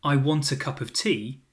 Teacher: The words I, a, and of are unstressed. They get squeezed into very little time, and they sound reduced. I sounds like a quick a. · I sounds like a quick a. A sounds like uh. Of sounds like uh as well. · So in the sentence, I want a cup of tea, the stressed words are want, cup, and tea. Those are the beats.